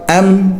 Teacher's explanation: یہاں پر میم کو لمبا نہیں کرنا، اس طرح نہیں کرنا، میم بند ہو جائے، آواز بند ہو جائے میم کی